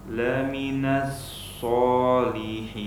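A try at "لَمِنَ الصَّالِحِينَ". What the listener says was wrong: Ya, lafaz shad antum sudah tebal. Cuman menebalkan shad tersebut jangan dibantu dengan memonyongkan mulut. Jangan so, tapi so. So.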